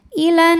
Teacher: alif lam menghadapi huruf Syamsiah yaitu Nun maka alif lam lewat tidak kita baca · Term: alif lam syamsiah